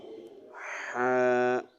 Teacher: ہا کی آواز جو ہوتی ہے یہ حلق کے درمیان سے رگڑ کھا کے نکلے گی